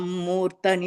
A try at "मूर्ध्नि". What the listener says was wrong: मूर्धनि கிடையாது. Da, not a full da.